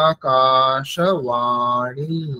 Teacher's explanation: আ এখানে দীর্ঘ আছে কা এখানে দীর্ঘ আছে সেজন্য একটু বেশি সময় নিতে হবে